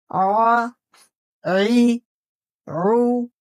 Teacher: جب ہم حلق کے درمیانی حصے کو تھوڑا سا سکیڑتے ہیں تو عین کی صاف آواز نکلتی ہے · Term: حرف عین